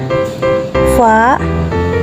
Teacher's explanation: suara huruf ini keluar dari antara bibir bawah dan ujung dua gigi seri yang atas